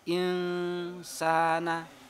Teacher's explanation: nun sukun bertemu dengan huruf sin, bacaan ikhfa atau dibaca samar. Insana, lidahnya di antara langit-langit dan bawah.